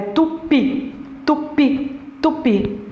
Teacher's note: A força está na última.